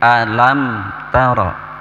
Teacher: Alam, lam di situ disebut idhar safawi ya. Idhar safawi, maka betul-betul harus dijelaskan mimnya.